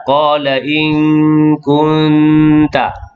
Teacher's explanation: Satu nun mati bertemu dengan kaf, yang kedua nun mati bertemu dengan ta. Dua-dua hukum ikhfa hakiki. Dua-dua dengung.